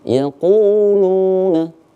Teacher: Agak panjang yaquluna karena di situ terdapat waw sukun. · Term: mad tabi'i